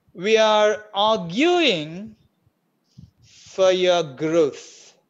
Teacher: Ra in your is also absent. In growth, Ra is there. · Ra in arguing, Ra is not there in the original speech, in the native speaker speech. Ra in fur disappeared.